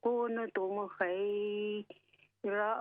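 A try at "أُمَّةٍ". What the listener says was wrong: उम्मतिन उम्मा नहीं लंबा ना करें ज़बर को उम्मतिन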